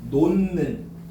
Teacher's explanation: 끝소리 디귿이 비음 니은에 영향을 받아서 니은으로 바뀐 거야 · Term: 콧소리